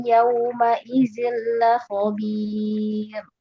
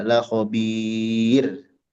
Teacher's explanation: Nah, itu seolah di sini ada tasydid di ra-nya dan ternyata nggak ada. Jadi hentakan di ujung itu menunjukkan ada tasydid. Kalau kita membaca seperti itu, kita memperlihatkan seolah di sana ada tasydid, padahal tidak ada.